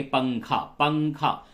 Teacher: اب پنکھا بولنے میں ناک میں آواز جاتی ہے، تو اسی طریقے سے یہاں پہ بھی اخفا میں، یعنی کہ اخفا کہتے ہیں آواز کو ناک میں چھپانا۔